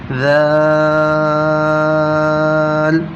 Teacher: جو زبان کا نوک ہے اس نوک کو ہم نے دونوں اوپر نیچے کے دانتوں کے درمیان میں رکھنا ہے